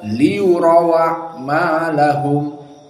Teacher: Maka di qiraah Wars dan qiraah Hamzah, hamzahnya di sini dibuang dan fathahnya pada hamzah a dipindahkan ke waw yang sukun, maka wawnya menjadi fathah.